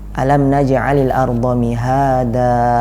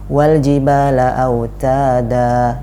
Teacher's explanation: kalau kita berhenti pada 2 ayat tersebut maka kita panjangkan 2 harokat. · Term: mat iwad